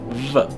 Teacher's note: This is a fricative sound, one of those that lets the air flow through a narrow space. It's labiodental, meaning that you use the top teeth and your bottom lip to make it, V, and it's voiced